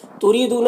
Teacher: را کے نیچے زیر را کو باریک پڑھیں گے